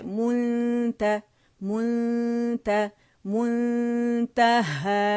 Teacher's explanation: आपने मीम को पकड़ के गोलाई देनी है लिप्स को